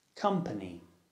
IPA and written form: 'kʌmpəni (company)